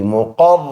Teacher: حل میم پیش مو قاف را زبر قر را زبر را دونوں کو پر پڑھیں گے قاف کو بھی را کو بھی